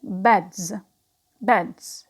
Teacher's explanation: s becomes z after voiced consonant. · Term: assimilation in voicing